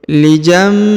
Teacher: Huruf nun sukun bertemu dengan ba harokat i ya, maka ditahan, didengungkan, kemudian berubah menjadi huruf mim ya. Huruf nun sukunnya berubah menjadi mim.